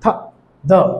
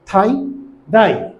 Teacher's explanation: জিহ্বার অগ্রভাগ উপরের দাঁতের নিচে দিয়ে বলতে হবে